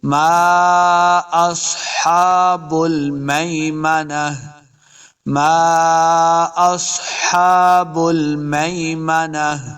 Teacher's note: اصحاب المیمنہ، دیکھیں آخر پہ تا ہے، جب ہم وقف کریں گے تو اس گول تا کو ہا کے اندر بدل دیں گے تاکہ ہا کی آواز آئے، تا ساکن ہو جائے گی۔